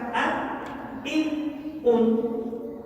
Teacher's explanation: tidak masuk ke dalam makhrajnya khaisun, tidak masuk ke dalam hidung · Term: nun sukun